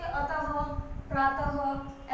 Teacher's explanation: विसर्ग का उच्चारण व्यंजन ह के समान होता है, ह आधा ह।